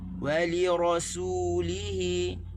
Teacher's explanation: Wali rasulihi, waw tak tekan di li, tekan di ra, kita tekan di hi. Ada 3 tempat tekan.